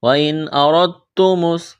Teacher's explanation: وَإِنْ أَرَدْتُمُ را کو موٹا کرنا ہے، را کے اوپر زبر ہے، دال ساکن ہے، اس کے بعد تا ہے، تو یہاں را کو تا کے ساتھ ملانا ہے، اس دال کو نہیں پڑھیں گے